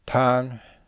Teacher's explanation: The word tang begins with a low-class consonant, has a long vowel, and ends with a nasal consonant, nga. There is no tone marker, so this would be a high tone.